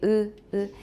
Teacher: It does not have spread lips like e, but lips that are fairly close together, compressed vertically, 就是上下，它是有点被压缩, with the corners neither drawn back as in a spread vowel, nor pulled together as in a rounded vowel. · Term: high unrounded vowel